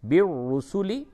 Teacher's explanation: یہ را کو پر کر کے پڑھیں گے، را کے اوپر پیش ہے